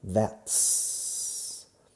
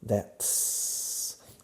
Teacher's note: hacemos la contracción aquí, contrayendo la T junto con la S de is, eliminando la I